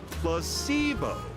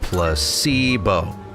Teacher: The stress is on the middle syllable.